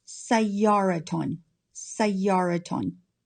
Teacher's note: Sayyara is a singular, feminine, indefinite noun, ending in ta marbuta. Because it ends in ta marbuta, we have a ta sound at the end when we add nunation. So it's pronounced sayyaraton, sayyaraton.